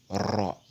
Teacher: Elle se prononce lorsque l'apex, le bout de la langue, rebondit sur la muqueuse palatine en plus d'une vibration sèche